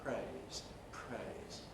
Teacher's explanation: that puff of breath happens during the consonant during the r in the case of praise so the effect is a voiceless r praise praise in the